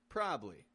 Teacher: we're pronouncing a word that's spelled with three syllables as a two- syllable word keeping it quick and quiet